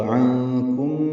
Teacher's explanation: نون ساکن کے بعد کاف آنے کی وجہ سے اخفا ہے، نون کی آواز چھپائیں گے